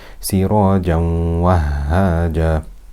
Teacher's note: Sirajan is Tanween. It is followed by a Waw. That's Idgham with Ghunna.